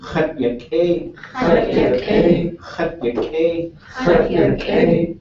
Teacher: It's low tone, right? So there's no high tone